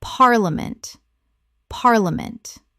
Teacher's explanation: The middle syllable collapses dramatically.